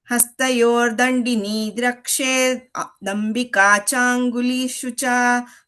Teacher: Rakshed Dambika instead of Rakshed Ambika. I'm putting those two together.